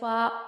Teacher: ऊपर के दांतों के किनारे और निचले होठ के तर हिस्से से अदा होता है